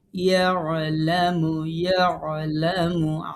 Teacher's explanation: ইয়ালামু আইন গলার মাঝখানে নিতে হবে